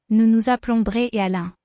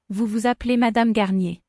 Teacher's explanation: the E before the L makes an uh sound and E Z makes an a sound